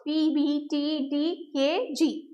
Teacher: complete closure of airflow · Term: stops